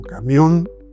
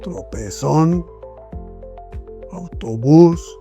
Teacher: En la última sílaba se recarga el la sílaba. La última sílaba es la sílaba tónica, se llama, la que recibe todo el peso de la pronunciación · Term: palabras agudas